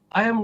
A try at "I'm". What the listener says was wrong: So don't forget when it's a contraction, we read it as a contraction. So not I am, I'm.